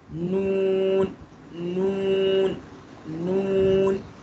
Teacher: जब आप नून प्रोनाउंस कर रहे होंगे ना तो आपकी ज़बान मसूड़ों पे भी लग रही होगी और हल्की हल्की जो है ना दांतों पे भी लग रही होगी।